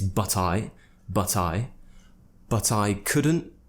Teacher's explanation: i didn't pronounce the T at the end of couldn't again because it's more natural for me